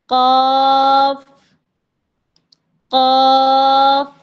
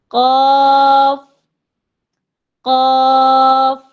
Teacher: جب زبان کا پچھلا حصہ اوپر کے نرم تالو سے لگ جاتا ہے تب جا کے قاف ادا ہوتا ہے